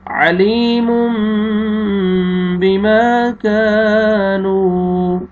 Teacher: یہاں پہ دیکھیں تنوین کے بعد با ہے، آپ نے تنوین کے نون کو میم میں چینج کرنا ہے، اس سے پہلے یا مد ہے، یا جزم سے پہلے زیر، لام کو آپ نے کھینچنا ہے. یہ الف مد ہے، الف سے پہلے زبر، میم کو آپ نے کھینچنا ہے، آگے پھر الف مد ہے، الف سے پہلے زبر، کاف کو آپ نے کھینچنا ہے، اور لاسٹ میں واو مد ہے، واو جزم سے پہلے پیش، نون کو بھی آپ نے کھینچنا ہے.